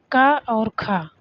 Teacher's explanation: अघोष व्यंजन वह वर्ण जिनका उच्चारण करते समय स्वर तंत्री में नाद या कंपन उत्पन्न नहीं होता वह अघोष अघोष मतलब जिसमें घोष ना हो जिसमें झनझनाहट ना हो